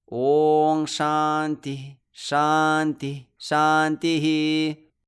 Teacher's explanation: sagas elsewhere in a verse can be released without an echo in sutras or mantras it is the last visarga that is echoed